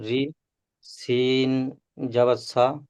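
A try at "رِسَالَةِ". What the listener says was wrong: সিন খাড়া যাবার, শুধু যাবার নয়, খাড়া যাবার। সিন খাড়া যাবার সা, একালি পরিমাণ টান দিয়ে বলেন। রজের রে, সিন খাড়া যাবার সা, রিসা, লাম খাড়া যাবার লা, রিসালা, তাজের তি, রিসালাতি, এরকম ভাবে বানান করেন।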